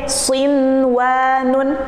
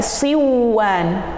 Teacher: Karena itu berada dalam satu kata. Jadi nun sukun dan wawunya ada dalam satu kata, sehingga tidak diidghamkan, tidak berlaku idgham, akan tapi nunnya dibaca jelas